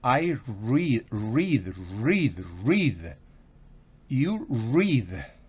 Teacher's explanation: Recuerden que eso es gutural. La R es gutural en inglés.